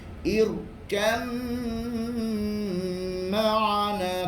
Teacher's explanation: Idgham ba sakinah dan mim hendaklah disertakan gunnah dengan kadar 2 harakat.